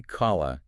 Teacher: Opening your mouth wide with an elongating alif cranks the thickness to a 10. The larger the internal cavern, the bigger the resulting echo. · You physically drop your jaw, the back of your tongue is raised to hit that heavy cough, and you've just created the largest possible cavern inside your mouth for that sound wave to bounce around in. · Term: level 1